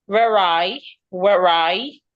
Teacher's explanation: The next word I starts with a vowel so I should link it together.